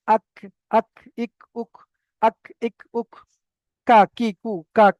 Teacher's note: ওটা ছিল জিহ্বার একদম গোড়া থেকে উপরের তালুর সঙ্গে লাগিয়ে। এটা হলো জিহ্বার গোড়া থেকে একটু আগে এসে ওই সোজা উপরের তালুর সঙ্গে লাগিয়ে কাফ উচ্চারিত হয়।